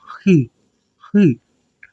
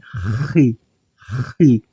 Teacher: Por mais que eu tente pronunciar de forma fraca, sendo uma consoante gutural, eu ainda forço a garganta.